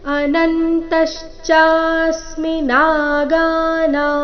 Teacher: ಅನುಸ್ವಾರದ ಉಚ್ಚಾರಣೆ ಇಲ್ಲಿ ನಾಸಿಕವ ರೀತಿ ಬರಬೇಕು